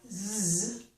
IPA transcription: z